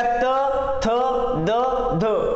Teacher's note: यामध्ये दंत्य, दंत्य म्हणजे जे व्यंजन उच्चार करत असताना किंवा स्वर उच्चार करत असताना जिभेचा स्पर्श पुढच्या दातांच्या टोकाला होत असेल, जिभेच्या टोकाचा स्पर्श समोरच्या दातांच्या टोकाला होत असेल तर ते दंत्य असतात